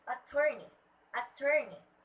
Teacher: Okay, the stress word should be at the second syllable.